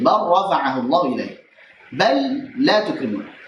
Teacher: Hukumnya ada 2, dibaca dengan idgham saat ketemu dengan lam maupun ra.